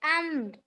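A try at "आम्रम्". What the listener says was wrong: अम्म, अभी भी उच्चारण नहीं। आम में फर्क नहीं है आपको? आ और मा अम होता है।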